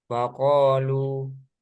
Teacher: jadi ketika wakaf madnya itu muncul dua harakat jadi Mad itu kan panjang ya artinya waqu bukan waqu lu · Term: Mad thi'i